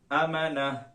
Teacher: یہاں پر گول تا تھا، اس لیے گول تا کو وقف کی صورت میں ہم نے ہا میں بدل دیا